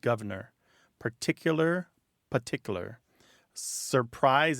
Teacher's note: you hear governor with that first R dropped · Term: dissimilation